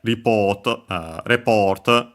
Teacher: actually the accent is on the PO. Uh so yeah, report uh report uh because of course Japanese doesn't change the accent of uh words they they've taken from English depending on their usage as a noun or a verb like English does. · notice the difference that actually the accent is on the po